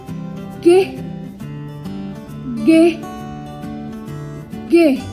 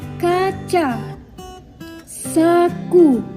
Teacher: Konsonan ini merupakan konsonan yang dihasilkan oleh belakang lidah sebagai artikulator dan langit-langit lembut sebagai artikulasi. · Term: konsonan dorsovelar